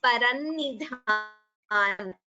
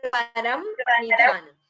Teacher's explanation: Here Param Nidhanam, while combining the Sandhi, we chant as Parannidhanam.